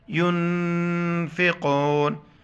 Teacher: نون پر جزم ہے، یہ جزم ہے تو یہاں پر اخفا کریں گے، یہاں پر بھی ساؤنڈ ان نوز، ناک میں آواز چھپائیں گے